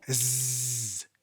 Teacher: Now the voiced S is like humming and saying S at the same time.